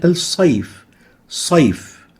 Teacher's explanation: The ya, when it comes with sukoon preceded by a fatha, it can be stretched as being a lean letter